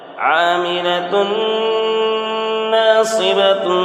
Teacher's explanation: عاملۃ ناصبۃ، یہاں پر ادغام ناقص، دو پیش تنوین کے بعد حروف یؤمن میں سے نون ہے، اس لیے دو پیش تنوین کی آواز کو ناک میں لے جا کر غنہ کے ساتھ پڑھیں گے